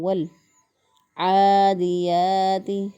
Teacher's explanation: تو لام ساکن کو واو کے ساتھ ملا کر ہم پڑھیں گے ول عادیات، عین کھڑی زبر آ، اس کو ایک الف کے برابر پڑھیں گے لمبا کر کے، کیونکہ کھڑی زبر، کھڑی زیر اور الٹا پیش یہ حروف مدہ کے قائم مقام ہوتے ہیں۔